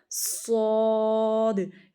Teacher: صاد موٹا بھی ہوگا نا، صاد. اس کو پڑھتے ہوئے نا آپ کا منہ بھر آتا ہے، فل ہو جاتا ہے، موٹا ہو جاتا ہے.